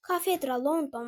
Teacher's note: sözlərinin vurğusu ilk hecaya düşmüşdür